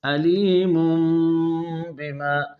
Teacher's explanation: بما، اب تنوین کے نون کے بعد با آ رہا ہے، آپ اس تنوین کے نون کو میم سے بدل کر غنہ کے ساتھ ادا کریں گے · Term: اقلاب